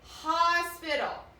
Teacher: The O in hospital says ah. So that's how I know hospital has the short vowel sound.